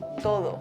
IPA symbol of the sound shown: ð̞